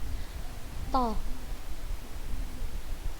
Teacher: Punggung ujung lidah pada posisi pangkal 2 gigi seri atas. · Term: huruf to